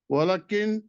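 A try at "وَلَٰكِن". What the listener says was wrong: ولیکن वाला लाम को लंबा किया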